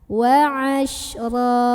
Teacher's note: Maka cara membaca fathah tanwinnya ini ya, diganti fathah tanwinnya jadi fathah, jadi barisnya 1, tapi dipanjangin sepanjang 2 harokat. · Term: mad iwad